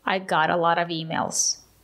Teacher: The letter T is between two vowels we pronounce it as a fast D